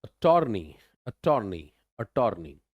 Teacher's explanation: Next is अटॉर्नी, अटॉर्नी, अटॉर्नी, यू एच यहाँ पे आ गया शुरू में, यानी स्टार्टिंग में जोर नहीं, ये टॉर वाले पार्ट पे जोर आएगा, और टार नहीं है, ये टर है।